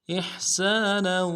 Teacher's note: حمزہ کو ہا کے ساتھ ملانا ہے، ہا کو گہرائی سے ادا کریں گے · نون کی تنوین کو واو کے ساتھ ملائیں گے، غنہ کرتے ہوئے واو کے ساتھ ملائیں گے ، احسانا وذی القربى اگلے واو کو نرم سے ادا کریں · سین کی سیٹی باریک ہوگی